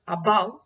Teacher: in a word above, you see that a is unstressed and bow is stressed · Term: iambic